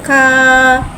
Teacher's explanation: काफ को एक अलिफ़नी 3 हरकत के बराबर खींच के पढ़ेंगे। ये बारीक वाला काफ है, लिहाज़ा से हम बारीक अदा करके पढ़ेंगे। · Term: खड़ा ज़बर